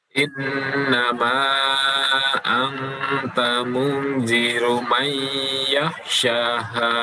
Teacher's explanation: Mayyakh ditahan lagi, nun mati bertemu dengan ya.